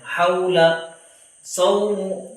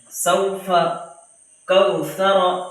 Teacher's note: واولین کو نرم آواز کے ساتھ جلدی ادا کرنا، جلدی پڑھنا ہے، لانگ نہیں کرنا ہے